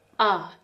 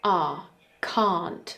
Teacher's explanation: ah is short and that's the bad version ah can't that's longer and that's the fine version